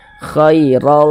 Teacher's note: Kemudian huruf ro kalau memiliki harokat fathatain ya, maka huruf ro dibaca tabkhim, dibaca tebal. Sehingga pangkal lisan kita naik terangkat ke atas ketika kita mengucapkannya. Tebalkan huruf ro-nya.